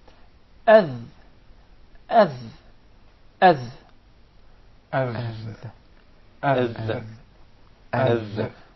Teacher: the dal is articulated from the tip of the tongue and the bottom edges of the two top front incisors.